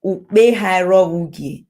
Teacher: So when two vowels meet each other, to ease pronunciation, to avoid like a pause, the vowel of the last word of the previous word, the last vowel drops to ease that. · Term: vowel elision